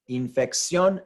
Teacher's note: the stress is on that sion syllable